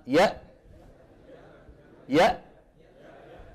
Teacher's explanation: الهمزة كما ترون تخرج بانطباق الوترين